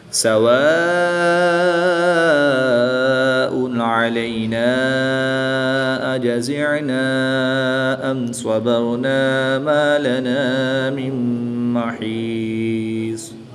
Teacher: نون ساکن کے بعد میم حروف عمل ان میں سے ہے تو یہاں پر ادغام مع غنہ ہوگا، یعنی غنہ کر کے پڑھیں گے